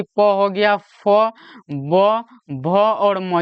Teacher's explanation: ये सभी के सभी का अगर आप लोगों से उच्चारण स्थान पूछे तो ओष्ठ बताना है